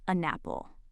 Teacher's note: The N literally jumps over and grabs the next word. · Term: linking